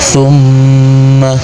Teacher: Tumma selanjutnya ada mim tasdid disebutnya hukum bacaan gunna musyaddadah. Cara membacanya huruf mimnya dibaca dengan mendengung.